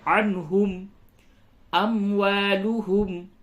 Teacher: نون ساکن کے بعد ہا ہے، اس جگہ پہ اظہار ہوگا